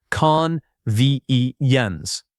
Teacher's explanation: The word convenience has stress on the second syllable